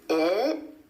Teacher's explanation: The tongue goes up for the T at the end of the word it, holds there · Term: held T